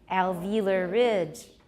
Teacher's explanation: it's not a compound now so we need to stress Ridge